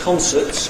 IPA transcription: ˈkɒnsəts